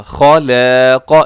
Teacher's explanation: خا موٹا، لام باریک، الف باریک، قاف موٹا